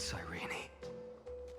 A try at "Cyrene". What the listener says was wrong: It's Cyrene. You pronounce the E.